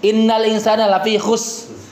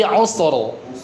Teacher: Jangan dihilangkan huruf terakhir rnya itu